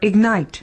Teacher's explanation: ignite as a verb ignite with the stress on the second syllable